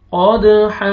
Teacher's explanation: वक्फ की सूरत में जब स्टॉप करेंगे तो हा ज़बर अलिफ हो जाएगा, अलिफ से पहले फतहा, अलिफ मद्दा, हा को आपने खींचना है।